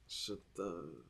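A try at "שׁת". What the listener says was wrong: Drop the A at the end of the th.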